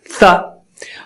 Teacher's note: تو مثال دیکھیے، ان ثا کی، ان کہیے تو آپ کی زبان اوپر ٹچ ہو گئی، ان، اور ثا کہیے تو وہی زبان کی ٹپ کو نکال کر دانتوں کی ٹپ کے پاس، اوپر کی دانت کے ٹپ کے پاس لے آنا پڑے گا، ثا۔ تو اب یہ انثا جب کہہ رہے ہیں تو آپ مخارج میں ٹکراؤ ہو رہا ہے بازو بازو، تو کیوں نہ نون کو ہلکا کر دیا جائے یا دبا دیا جائے، اسی کو چھپانا کہتے ہیں، چھپا دیا جائے۔